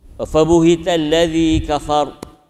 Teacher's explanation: kafar kalau waqaf matikan ro dan kena tebal kan, sebab ro tu sebelumnya ro tu disukunkan, dimatikan sebelum berada atas.